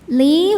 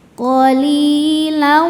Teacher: Sebab ada ya sukun sebelumnya kasrah. Cara bacanya huruf lam panjang dua harakat. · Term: mad thobi'i zohiri